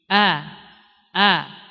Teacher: Jadi suara langsung keluar dan rendah, keluarnya dengan dari jalan yang rendah. Artinya dia tidak meninggi. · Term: istifal